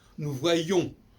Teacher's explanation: dans le nous voyons, on n'en prononce pas le N, ni le S d'ailleurs